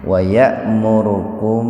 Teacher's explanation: Nah, jadi kalau ada mim mati bertemu dengan ba, itu ihfa safawi. Jadi dibaca samar di bibir, tahan 2 ketukan itu biar terdengar samarnya.